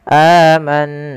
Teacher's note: Amanna, lagi kita dapati ada mad badal 2 harakat di lafal a. Manna, nun berharakat tasydid ditahan suara bunyinya amanna karena ia kita hukumi dengan bacaan gunnah.